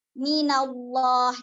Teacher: dengan harokat dhommah atau Fatah jadi hukumnya adalah lamnya dibaca tebal lamnya dibaca tebal dengan cara apa kita angkat pangkal lidah